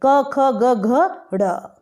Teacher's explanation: अ आ क वर्ग यानी क ख ग घ ड़, ह और विसर्ग, इन सब का उच्चारण स्थान क्या है? कंठ है।